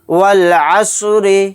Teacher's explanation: یہاں پر دیکھیے یہ الف نہیں پڑھا جائے گا، واو کو لام کے ساتھ ملا کر پڑھیں گے۔